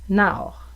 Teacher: on prononcerait un peu un A en début de voyelle et tendre vers le haut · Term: diphtongues